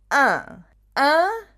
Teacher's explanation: So I invite you to make a E sound, but make it nasal and go in the back of your throat and up your nose again. Yeah, I don't know if you can see, my throat is slightly retracted and also my bottom jaw goes like almost a little bit at the back and then up.